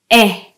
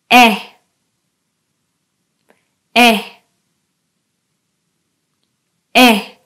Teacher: Now, for this sound, my tongue is in the middle part of my mouth and I stretch out my lips a little bit